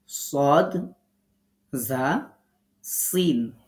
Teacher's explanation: মাখাজ জিহ্বার আগা নিচের দুই দাঁতের আগা এই পয়েন্টটার দিকে তাকান জিহ্বার আগা নিচের দুই দাঁতের আগার সাথে লাগিয়ে উচ্চারিত হচ্ছে তিনটি হরফ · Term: 13 নম্বর মাখাজ